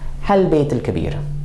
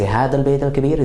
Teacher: One variation that you do hear in Levantine sometimes is that ism al-ishara kind of gets elided, and all we hear of it is ha